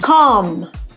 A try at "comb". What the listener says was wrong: It's not calm. We cannot use the short ah sound like hot and stop. Calm. We have to use the long o sound like no and go. We pronounce this word comb. O. Make the long o sound. Comb. And remember, the B is silent. Don't pronounce the B. Comb.